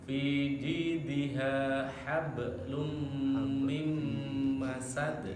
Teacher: Jadi dibaca, ditahan, dimasukkan tandanya ke mim. Nun mati suara nunnya masuk huruf mim lagi. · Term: idgham